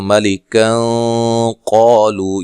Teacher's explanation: ملکا قالو یہاں نون تنوین کا اخفا ہوگا